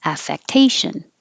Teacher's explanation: putting it to the noun form, but the stress moves to te, affectation.